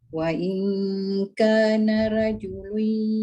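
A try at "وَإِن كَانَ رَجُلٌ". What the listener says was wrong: Ya, ka panjang nak pendek.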